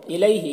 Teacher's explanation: یالین سے نرم آواز کے ساتھ جلد پڑھیں گے۔